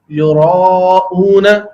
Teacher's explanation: اسی طریقے سے یراؤن، یہاں را الف زبر را، عربی میں یہ را پر پڑھا جائے گا، موٹا پڑھا جائے گا. اگر اس کو یراؤن اردو کے انداز میں پڑھ دیا جائے گا تو یہ بھی لہن خفی کی غلطی بنے گی.